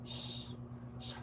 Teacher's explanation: Ang hangin lumalabas ay nagdaraan sa makipot na pagitan ng dila at nangalangala o kaya'y mga babagtingan ng pantinig. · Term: pasutsot